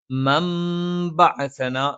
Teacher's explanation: നൂനിനെ മീമാക്കി മറിച്ചു മണിക്കുന്നു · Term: ഇഖ്ലാബ്